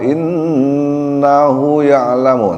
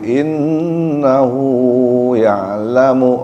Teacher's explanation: inna ya ditahan sebentar karena ada ghunah